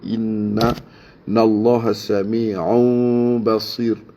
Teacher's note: innallah wajibul ghunnah macam biasa dengung bagi lama